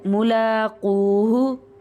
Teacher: زبر ہے اس کو لمبا کریں گے ملاقوہ واو کے بعد کاف کے بعد واو ہے دونوں کو لمبا کریں گے